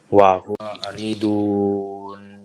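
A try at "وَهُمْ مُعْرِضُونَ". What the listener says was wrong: Gunahnya, jangan lupa. Coba ulangi. Hati-hati, mim di dhamma ya.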